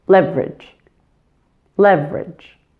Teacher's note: Primary stress is on that first syllable and weak stress is on the last. So soften that final vowel sound to just leverage.